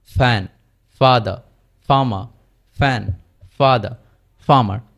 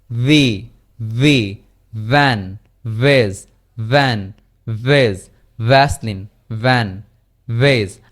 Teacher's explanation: সো এফ যে জায়গা থেকে উচ্চারিত হয়েছে, উপরের দাঁত এবং নিচের ঠোঁট, এখানে শুধুমাত্র কি আমাদের এই যে ল্যারিংস রয়েছে এটি শুধু কম্পিত হবে না এফ এর ক্ষেত্রে, কিন্তু ভি এর ক্ষেত্রে কম্পিত হবে। দুটোরই আমাদের সাউন্ডের উৎপত্তি স্থল সেম, শুধুমাত্র ভি এর মধ্যে পরীক্ষিত এটা কম্পিত হবে।